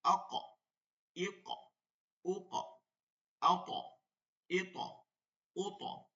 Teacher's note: আবার কেউ আক বলেন না, জবর দিয়ে দিয়েন না কিন্তু, মানে চাপ দিয়ে ধরেন তারপরে প্রতিধ্বনি করেন, কিন্তু সহজে জবরজের পেশ দিয়ে দিয়েন না, আক ই ক এরকম বলে দিয়েন না, তাহলে কিন্তু ভুল হবে মারাত্মক। আক চাপ দিয়ে ধরে জাস্ট একটু আওয়াজ হবে, হরকত হবে না কিন্তু।